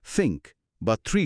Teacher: একটা হলো ভয়েসলেস বা অঘোষ থ, যেটা থিঙ্ক বা থ্রি শব্দে পাওয়া যায়।